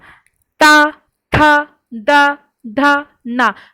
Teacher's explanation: हमारी जुबान जो है वो कहाँ छू रही है, हमारे जो ऊपर के जो दांत हैं उनके नीचे के हिस्से को छू रही है। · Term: त वर्ग